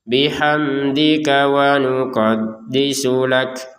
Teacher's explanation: Nah, wa nuqaddisu lak, jadi gabung saja ka ke wawu ke nun, sin ke lam, jadi gabung saja walaupun terpisah ya.